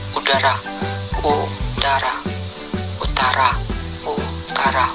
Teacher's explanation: kriteria vokal belakang tinggi atas bundar